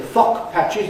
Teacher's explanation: And they say /ˋfɒkpæʧɪz/ instead of /ˋfɒgpæʧɪz/ <fog patches>.